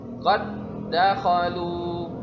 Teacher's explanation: Jadi huruf dal pertama langsung dimasukkan ke dalam huruf dal yang kedua. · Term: idgham